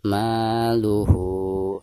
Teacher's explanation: ketika membaca hu, maka di sini harus dipanjangkan 2 harokat karena dihukumi mad silah qasirah ya.